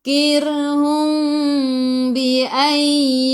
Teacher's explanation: Mim bertemu dengan ba ikhfa syafawi, dengung 2 harakat bawa ke sisi dengung 2 harakat nak rapatkan bibir boleh, tapi jangan tekan.